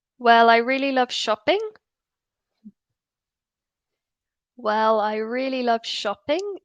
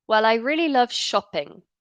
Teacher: because it's a statement it should be falling